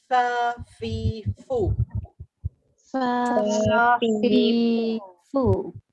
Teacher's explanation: Fa, mahraj fa ni dia di bibir tapi gigi atas dengan bibir bawah macam rabbit tu. Dia ada bersifat, dia ada angin sikit, hamas dipanggil.